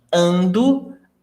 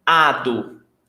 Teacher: You just drop the N from gerund. Ando becomes ado.